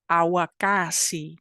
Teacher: you pull your tongue back up but you also round your lips so it's labial and verer at the same time glottal sounds